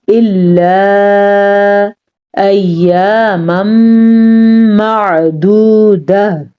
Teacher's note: اس مد کو آپ نے 2.5 سے 3 سیکنڈ، 2 سے 3 سیکنڈ تک یا 2.5 سیکنڈ تک آپ نے اس مد کو لمبا کرنا ہے ، الا ایاما معدودہ، پھر سنیں ایاما معدودہ، یہ ہمارے پاس